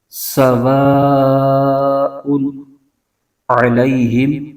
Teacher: اس میں عین کو اس کے مخرج کے ساتھ ادا کریں گے، یعنی حلق کے درمیانی حصے سے اس حرف کو ادا کرنا ہے · کفروا، آگے سواء، تو واو سے آگے الف اور الف سے پہلے زبر ہو تو الف مدہ ہوتا ہے، اور الف مدہ کے فوراً بعد اسی کلمے میں حمزہ آ جائے تو مد متصل بن جاتی ہے، پھر اس کو 2 2.5 الف کی مقدار لمبا کھینچتے ہیں۔